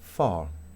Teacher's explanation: nos da la impresión que al final de la palabra la vocal pareciera más larga esta es una vocal larga que quiere decir larga que tiene